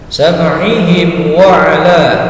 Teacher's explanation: Ketika dilanjutkan atau diwasal disambungkan dengan kalimat berikutnya, sam'ihim wa 'ala, mim sukun bertemu dengan huruf waw, karena bukan mim dan ba maka disebut idhar safawi, bacaannya jelas tidak mendengung dan pendek